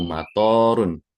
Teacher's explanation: Sementara kalau kita dibacanya dengan fonem panjang yaitu matorun, to-nya itu dibaca dengan panjang